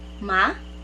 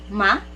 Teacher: So it seems like you're questioning, so your voice should be rising. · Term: second tone